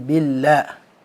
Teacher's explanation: lam dalam kalimat Allah ketika sebelumnya adalah kasrah dia tipis. Jadi jangan sampai dibaca tebal.